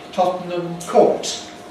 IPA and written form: ˌtɒtnəm ˈkɔːt (Tottenham Court)